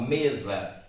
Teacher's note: o acento tónico recai sobre a penúltima sílaba · logo percebe que a sílaba mais forte é me. Então, você fala mesa. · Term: paroxítonas